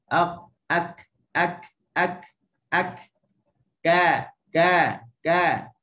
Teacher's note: Huruf kaf ni ni makhraj dia lah. Okey, pertemuan pangkal lidah dengan langit atas · Okey, kena dengan langit yang keras. Qaf kat belakang, kaf kat depan.